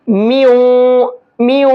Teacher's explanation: تو اب یہ نون کی آواز نہیں نکلے گی, بلکہ اب واو کی آواز نکلے گی تنوین کے اندر. کیوں؟ کیونکہ تنوین واو میں مکس ہو گیا ہے. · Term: ادغام مع الغنہ